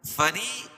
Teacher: فری یا مدہ ہے، یا سیکنڈ سے پہلے را کے نیچے زیر ہے تو اس کو ایک الف کے برابر کھینچ کے پڑھیں گے اور را باریک پڑھی جائے گی